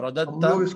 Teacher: جب قریب المخرج ہوں یعنی 2 حرف ہوں اور دونوں کے ساؤنڈ بہت قریب قریب کا ہو تو اس کو تا اس سے بدل کر اور اس میں ادغام کر دیتے ہیں